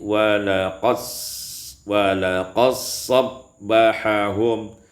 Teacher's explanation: idgham dal fi sad, diidghamkan dal pada sad maka menjadi walaqad sabbahahum